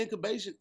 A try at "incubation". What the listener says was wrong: You don't need no other syllables.